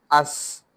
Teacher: This is seen, and it is read as As, a whistling sound.